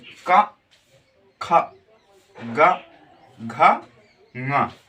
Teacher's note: कंठ यानी का वर्ग, जिनको बोलने में कंठ, जिनके उच्चारण हम कंठ से करते हैं